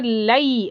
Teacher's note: لئی یہاں پر یا لین ہے، اچھے سے دبا کر لئی، ایسے یا والا ساؤنڈ واضح آنا چاہیے